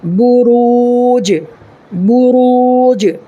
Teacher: یہ را کو پر پڑھنا ہے اس لیے کہ را کے اوپر زبر ہے، اس لیے را پر ہوگا، اور یہ واو ساکن سے پہلے را پر پیش ہے تو واو ساکن سے پہلے پیش ہو تو واو مدہ ہوگا، اس کو ایک الف کے برابر کھینچ کر کے پڑھنا ہے